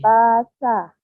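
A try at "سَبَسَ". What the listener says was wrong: Oh, kedengarannya kayak abasa. Udah. Sabasa. Jadi artikulasi di mulutnya harus jelas dibuka ya.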